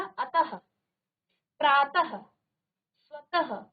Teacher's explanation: विसर्ग क्या होता है, इस ध्वनि का उच्चारण ह के समान होता है